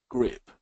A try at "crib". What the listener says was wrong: Do crib again, because I was hearing grib with a G sound instead of the crib.